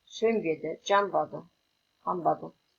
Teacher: Түбірдің соңғы н дыбысы б, п дыбыстарының алдынан келсе, н дыбысы айтылуда өзгеріп м дыбысына айналады, ал жазуда бұл ескерілмейді.